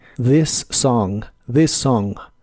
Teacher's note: Uno es soplando con la punta de tu lengua debajo de tus dientes superiores y el otro es pronunciándolo como una D vibrante. Para la palabra this, la TH se pronuncia como una D vibrante.